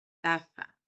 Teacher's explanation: cuando nosotros tendríamos que pronunciar la taza, como realmente debería pronunciarse con Z, la lengua debería estar entre los dientes, así, taza.